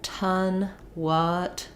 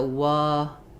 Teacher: there's maybe a little bit rounding that lingers into the vowel